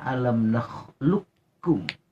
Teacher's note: Qaf dan kaf sepakat ulama dua huruf ini mutaqaribain, berdekatan makhraj dan sifatnya. Oleh karena disatukan, qafnya hilang. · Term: idgham mutaqaribain